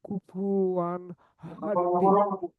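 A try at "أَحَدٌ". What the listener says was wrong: হাদি না, এই যে একদম পুরোপুরি জের বললে হবে না, এটা বলতে হবে ধাক্কা দিয়ে। আহাদে, আল্লাহু সমাদে, মাদে, একটা ভিতর থেকে একটা ধাক্কা নিয়ে আসেন, জোরে বলুন, তখন এটা সুন্দর হয়ে আসবে। লাম ইয়ালিদে, ইয়ালিদি বললে তো এটা জেরই হয়ে গেল, জের না, মূলত এটা জেরের দিকে ধাবিত করা, মূলত জেরের মতো ধাক্কা দেওয়া, এই হলো বিষয়।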